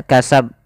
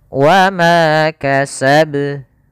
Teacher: qalqalah kubra, yaitu qalqalah yang terjadi di akhir bacaan kita